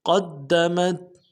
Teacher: ابدا بما قدمت بما میں میم کے بعد الف مدہ ہے، ایک الف دال میں کھینچیں گے، قاف کو موٹا کرتے ہوئے دال کے ساتھ ملائیں گے، دال کے اوپر تشدید زور دیں گے